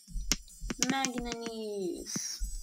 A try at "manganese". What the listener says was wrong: Manganese. No, there's no N after the G.